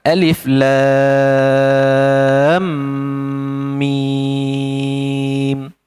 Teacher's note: Jadi kena dengung dua harakat. · Sebab ada berlaku pertemuan mim dan mim dekat sini. Jadi kena dengung 2 harakat. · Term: idgham mithlain